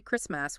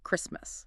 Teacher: Notice the letter T in the middle. It is a silent T. We do not say Christ-mas, we say Christmas.